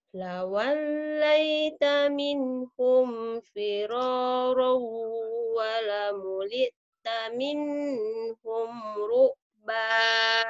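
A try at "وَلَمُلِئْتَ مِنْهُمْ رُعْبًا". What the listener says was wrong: Idhar jangan ditahan, Neng, minnya. Kan idhar. Maka kuat maksudnya.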